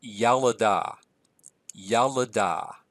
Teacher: we have this vowel reduction of the second vowel